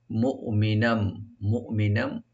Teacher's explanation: হামজাকে right দিবেন, কলকলা করবেন না